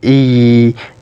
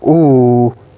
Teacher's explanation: while pronouncing e your tongue moves to front position while pronouncing ooh your tongue goes back and in other words the height the highest point in the